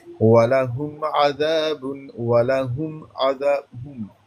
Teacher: اظہار میم پر دیر نہیں لگاتے اور میم کو ظاہر کر کے پڑھنا ہے